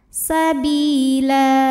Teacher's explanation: karena ada baris tanwin fathah yang kita wakafkan atau kita berhentikan maka baris duanya jadi satu jadi la dan panjang kan dua harakat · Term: Mad iwad